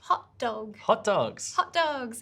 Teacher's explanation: we delete the first sound so the sound that is at the end of the first word and then we join them